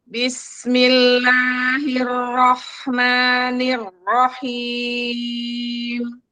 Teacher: sinnya ngalir full. Bismi, nggak diputus.